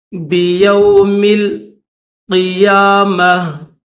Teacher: میم کو لام کے ساتھ ملائیں گے، بیوم القیامہ، قیامہ، قاف کے نیچے زیر ہے اور یا کے اوپر کھڑا زبر ہے، اس کو تھوڑا سا کھینچیں گے ایک الف کی مقدار میں، میم کے اوپر زبر ہے اور یہ بولتا ہے تو اس کو جب اسٹاپ کریں گے یہاں پر تو اس کو ہا پڑھیں گے۔